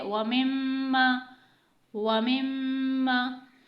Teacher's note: यहाँ पर मीम मुशद्दद आ रहा है तो यहाँ पर आपको गुन्ना लाजमी करना है